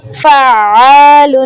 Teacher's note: فعال، یہ عین ہے حروف حلقی ہے اس پہ تو اس کو واضح کرنا ہے، اس کو گول گھما نہیں دینا، آوازوں کو مرج نہیں کرنا. 2 بار پڑھنا ہے تشدید کو، شد کو، اور کلیئر کر کے.